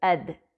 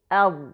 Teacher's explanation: دال زبان کی نوک سے ادا ہوتا ہے جبکہ ضاد پچھلے کناروں سے